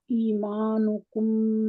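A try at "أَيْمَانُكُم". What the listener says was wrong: ऐमानु, ये ईमानु नहीं होगा, ऐमानु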